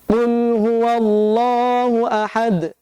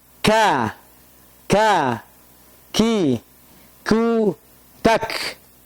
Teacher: kalau huruf qaf lidah kita terangkat, adapun huruf kaf lidah kita tidak terangkat mendatar seperti ini